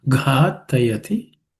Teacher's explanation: The gha is the fourth letter in the ka class of consonants, and it has to be aspirated.